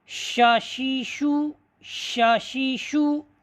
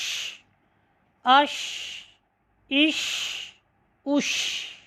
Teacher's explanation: شین زبان کا درمیانی حصہ اور اس کے مقابل جو تالو کا درمیانی حصہ ہے، ٹھیک ہے، وہاں پر لگنے سے حرف شین ادا ہوتا ہے۔